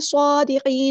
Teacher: گے۔ صادقین، صاد ہمارا heavy letter ہے، پورا ادا کریں گے، کھڑا زبر آ گیا تو مد اصلی کریں گے، دال باریک پڑھیں گے